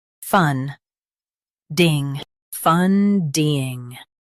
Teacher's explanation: Emphasize fun and keep ding light.